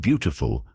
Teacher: In the word beautiful, the stress is on the first syllable.